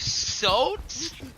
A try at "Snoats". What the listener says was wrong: That's Snoats, dude. Snoats. With an N. Snoats.